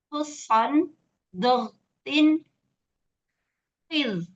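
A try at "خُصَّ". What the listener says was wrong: Bukan khuson, tapi khusso.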